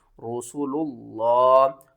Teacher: لفظ اللہ سے پہلے جب بھی پیش ہوگی تو ہم لفظ اللہ کو موٹا کر کے پڑھیں گے